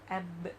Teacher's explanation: the bouncing sound coming for example let's take the alphabet b i touch my both lips and I say AB I press and then I leave it so when something hits and you open it like hit and